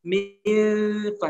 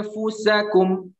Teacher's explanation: Batnus syafah as-sufla bertemu dengan atrafus thanaya al-ulya. Jadi tengah bibir bawah bertemu dengan gigi atas. Jadi langsung mempersiapkan mifa, tidak sampai menutup tapi mempersiapkan mifa, hampir menggigit sedikit. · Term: ikhfa huruf fa